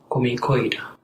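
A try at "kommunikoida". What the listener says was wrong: Comunicoida, yes. So make sure to pronounce the both M's.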